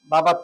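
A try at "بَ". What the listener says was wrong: থেকে জোরে বলবেন, আওয়াজ করে বলবেন। নো নো নো, বাবা না, এই যে বলছিলাম না টানা এসে পড়ে বাবা।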